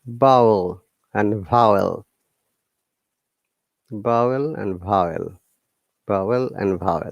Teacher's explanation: both B and V are voice sounds, which means we used our vocal cord